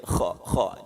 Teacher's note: Kho-nya ini memang huruf kasar di atas tenggorokan ini ya